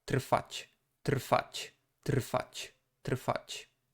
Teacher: It is actually comprised of kind of the three consonants, but since there is a T at the beginning, the whole part is kind of being voiceless